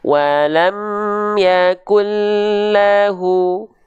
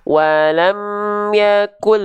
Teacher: Diidghamkan tanpa dengung, diidghamkan la gunnah tanpa dengung. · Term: idgham bila gunnah